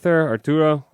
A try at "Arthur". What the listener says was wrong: It's Arthur, and you mispronounce it as Arturo consistently, but I chalk that up to your Spaniard heritage.